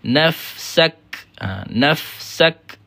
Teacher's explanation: Sebab dia dari sudut suaranya adalah syiddah. Nafsak kemudian ada hamas. Hammas ni ada percikan angin.